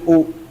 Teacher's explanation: waw mati itu harus dibaca u, bukan dibaca o.